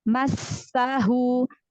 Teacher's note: nafasnya itu masih berhembus ya, masih berhembus. Sampai kita mengucapkan huruf setelahnya.